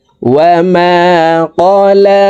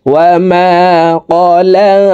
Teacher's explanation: লামের উপরে খাড়া জবর, তাই আমরা এই লাম হরফকে এক আলিফ টেনে পড়ব।